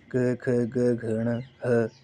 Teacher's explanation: ये कंठ से यानी कि गले से हो रहा है